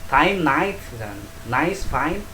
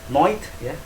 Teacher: Nice, fine dibaca dengan oi. AI jadi oi ini.